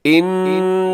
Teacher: ان، یہاں نون کے اوپر شد ہے، یہاں غنہ کر دیجیے گا اور آگے لفظ اللہ موٹا پڑے گا کیونکہ اس سے پہلے نون کے اوپر زبر ہے